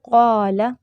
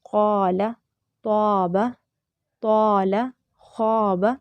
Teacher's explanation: الف جو ہے، الف اپنے ماقبل کے تابع ہوتا ہے، اگر ماقبل حرف موٹا ہو تو الف بھی موٹا پڑھا جائے گا، اور اگر ماقبل حرف باریک ہو تو الف بھی باریک پڑھا جائے گا۔ جیسے قال، اب یہاں پہ قاف موٹا ہے تو اس کے بعد جو الف سامنے آیا، درمیان میں آیا، وہ بھی موٹا پڑھا جا رہا ہے